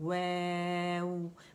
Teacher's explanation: واو mostly student کیا کرتے ہیں کہ اپنے زبان ہے وہ نیچے والا ہونٹ وہ دانتوں کو ٹچ کرتا ہے, ویو کر کے اوپر کے دانتوں کو, وہ نہیں کرنا, ہم نے گول کر کے پڑھنا ہے